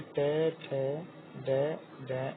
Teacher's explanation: फिर है उच्चारण स्थान मूर्धा